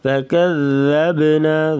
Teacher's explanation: نذیرون فکذبنا، نذیرون یہاں پر اخفاء مع الغنہ کر کے پڑھیں گے۔ فکذبنا، ذال کو نرمی سے پڑھیں گے، با پہ قلقلہ کریں گے۔ فکذبنا وقلنا، واو کو پڑھتے وقت ہونٹ گول کر کے پڑھیں گے، پھر اس کی صحیح ادائیگی ہوگی۔